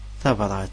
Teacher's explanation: Le T en double, ça se prononce en kabyle Ts.